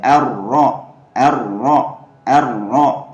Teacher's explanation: Nah, dibaca tebal ya, teman-teman. Dan ro-nya harus dibaca jelas ya. Jangan sampai hilang keberadaan takrirnya atau getarannya ya